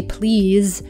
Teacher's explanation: when we say please, we do tend to pronounce it more like a Z sound at the end instead of an S.